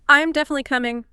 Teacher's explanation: It closes the door on that thought, indicates you're sure. I'm definitely coming. The voice goes down. Finality. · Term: falling intonation